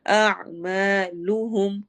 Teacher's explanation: आइन की आवाज को हम हलक में ठहराएंगे